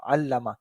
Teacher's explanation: مثال کے طور پر اگر ہمارے پاس یہ لفظ ہے علامہ، تو ایکچولی ہم کیا پڑھ رہے ہیں، ایک دفعہ لام کو ساکن پڑھ رہے ہیں اور پھر دوسری دفعہ لام پر وہ زبر دے کر پڑھ رہے ہیں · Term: تشدید